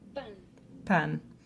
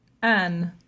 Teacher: he definitely eliminated the P sound in the initial position. It definitely was not there based on that recording.